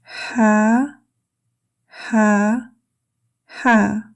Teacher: The articulation of ha is one of the huruf al-halq, meaning the throat letters. A breathy ha sound made from the middle of the throat. · Similar to the English in house. Air flows gently from the throat. There is no tongue contact. There is no lip contact. Ha is a light letter.